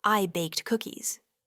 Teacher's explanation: If you utter this phrase rapidly, the D sound in baked might be barely audible or even completely disappear